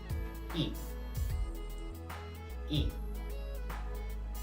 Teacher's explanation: To produce this sound, put your tongue close to the top and the front of your mouth. Stretch out your lips as you were smiling and then make a short voice sound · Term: short vowel sound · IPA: /ɪ/